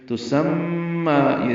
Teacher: مشدد پہ غنہ اور غنہ کریں گے، دو حرکات آواز ناک کے پاسے میں لے جا کر ٹھہرائیں گے اور اس کو لمبا بھی کریں گے کھڑا زبر کی وجہ سے۔